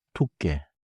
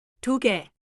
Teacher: 개 begins with 기역, but it stays plain. It is not 두깨.